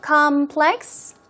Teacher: first syllable stress so it's obviously a noun